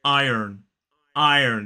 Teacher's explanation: in American English they do say the r and it sounds more like iron iron so it's still I